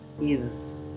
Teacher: la palabra is, que significa es del verbo to be, se pronuncia con la S zumbada. Z, no es una S suave, no es is, es is.